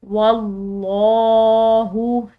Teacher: लफ्ज़ अल्लाह की लाम मोटी पढ़ेंगे क्योंकि पीछे वाले हर्फ यानी कि वाव की ज़बर है